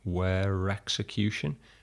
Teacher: we've got a little R sound intruding into there